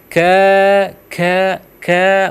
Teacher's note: jadi ka itu di langit-langit ya tapi dia langit-langit dalam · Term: huruf Kaf